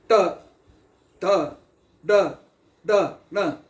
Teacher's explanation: ಕುತ್ತಿಗೆ ಮತ್ತು ಹಲ್ಲಿನ ಮಧ್ಯದಲ್ಲಿ ಮೇಲೆ ಇರು ಭಾಗಕ್ಕೆ ನಾಲಿಗೆ ಹತ್ತಿ ಗಾಳಿಯನ್ನು ಹೊರಗೆ ಹಾಕಿದಾಗ ಅದಕ್ಕೆ ಮೂರ್ಧನ್ಯ ವ್ಯಂಜನಗಳು